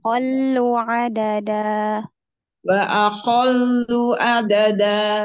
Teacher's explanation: Itu lamnya ada tasdidnya kurang jadi ditekan dulu